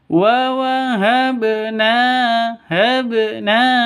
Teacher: Ba mati ya, ba mati harus dipantulkan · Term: Qalqalah sugro